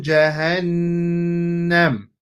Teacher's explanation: we have a ghunna because the Noon has a shadda. So this is why it's going to be a ghunna here.